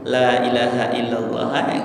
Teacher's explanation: kalimat Lailahaillallah itu semua makhraj hurufnya adalah di dalam tidak ada yang di bibir jadi kita mengucapkan Lailahaillallah tanpa menggerakkan bibir aja bisa kan cuma